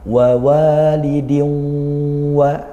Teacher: tanwin bertemu wawu, kita baca idgham bi gunnah, masuk kepada huruf wawu dan disertai dengan dengung